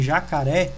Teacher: o ré é a sílaba mais forte, por isso que ela possui ali o acento. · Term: sílaba tônica